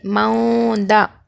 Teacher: نون کی آواز کو ناک میں چھپائیں گے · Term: اخفا